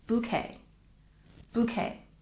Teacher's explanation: but the pronunciation for us is bouquet it's not B bouquet and we stress the first syllable